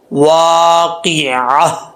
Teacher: عین کو حمزہ کا ساؤنڈ نہیں آنا چاہیے، لیکن لاسٹ پہ گول تا ہے، جب وقف کریں گے تو یہ تا ہا سے چینج ہو جائے گا